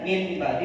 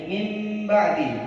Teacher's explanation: Mengganti nun sukun menjadi mim sukun.